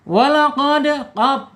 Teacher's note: Ya, pangkal lidahnya naik tuh, pangkal lidahnya naik menyentuh langit-langit yang ada anak lidah tuh